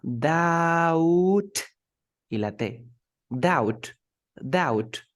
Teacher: we never say the b